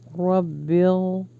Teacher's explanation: یہاں پہ رو کو ہیوی پڑھیں گے، پریس کریں گے با کے ساتھ